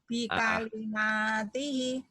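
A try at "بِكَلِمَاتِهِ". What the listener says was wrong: Hi-nya panjang juga ya. Kalau baca Quran nanti bikalimatihi. Sekarang lagi dibaca apa adanya ya. Bikalimatihi.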